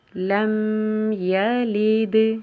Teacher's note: له ولم یکن له کفواً احد کفواً احد۔ تجوید کی غلطیاں: لم یلد دال کے اوپر جزم کی صورت میں قلقلہ ہوگا